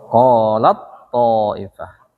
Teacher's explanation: Nah, kalau ta ketemu to, taknya ngilang masuk ke to. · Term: mutajanisan